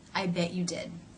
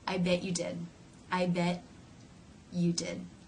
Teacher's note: rather than releasing air through the teeth the mouth simply moves in to the next sound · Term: no release